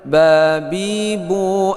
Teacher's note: ini kita baca dua perut bibir sebelah dalam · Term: bunyi huruf ba